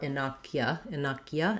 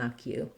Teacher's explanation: because it's unstressed that u becomes more of a schwa